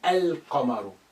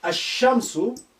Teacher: al the in its totality but here i just say ah you cannot hear the sound of lam that's been suppressed